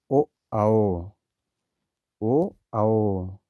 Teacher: जब हम दोस्तों ओ आओ शब्द अपने अंदर से निकालते हैं, इनका उच्चारण कंठ से और होठ से दोनों से होता है, इसलिए इनको कंठोष्ठी कहते हैं। जैसे ओ में जो है, ओ में आ जो निकलता है वो कंठ से निकलता है और ऊ ओष्ठी हो जाएगा। · आ का उच्चारण स्थान कंठ से और ऊ का ओष्ठ से, तो ये मिला के दोनों ओ हो गए, इसलिए कंठ ओष्ठी हो गए।